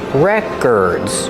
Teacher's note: Put the stress on the first syllable. Records. The second syllable is pronounced like the sound, like in burger.